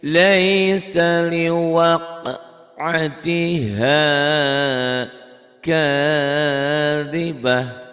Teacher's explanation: Tak ini tak marbutoh, apabila dihentikan berubah bunyi taknya jadi ha